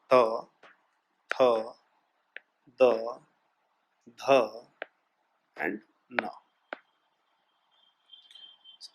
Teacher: त से न तक का जब हम यूज करते हैं तो जबान जो है वो दांतों से टकराती है।